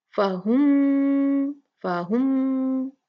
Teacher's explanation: ये कहलाता है 2 मीमों का इदगाम, और उसको कहा जाता है इदगाम शफवी। और दूसरी मीम पे तशदीद आती है हमेशा, तो उसको 2 काउंट बहुत ही मजबूत गुन्ना से पढ़ा जाता है।